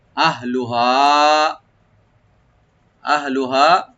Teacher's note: আহলুহা, আহলুহা, হামজাকে right দিবেন আর হাটাকে right দিবেন। দুটা অক্ষর কিন্তু একই জায়গা থেকে আসে, গলা শেষ থেকে। আহ, তবে খেয়াল রাখবেন যেন কলকলা না হয়।